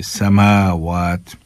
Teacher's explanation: میم کو بھی ایک الف کے برابر کھینچیں گے اور واو کو بھی ایک الف کے برابر کھینچیں گے